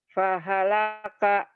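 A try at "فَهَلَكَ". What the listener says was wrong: Nggak ada yang panjang. Fahalaka. Fahalaka.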